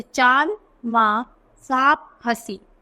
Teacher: जिस ध्वनि का उच्चारण करते समय वायु नाक और मुख दोनों स्थानों से निकलती है उसे अनुनासिक कहते हैं।